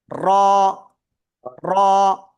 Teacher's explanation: জিহ্বার আগার পিঠ খেয়াল করবেন, সবাই সবাই খেয়াল করবেন। জিহ্বার আগার পিঠ তার বরাবর উপরে তালুর সাথে লাগাবো, লাগিয়ে আমরা এটা একালিফটা নিয়ে উচ্চারণ করব।